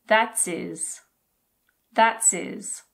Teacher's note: His is often reduced to is. Is. We drop the H again. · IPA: /ɪz/